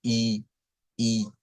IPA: iː